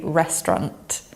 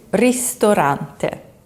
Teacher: The vowels in the middle just disappear.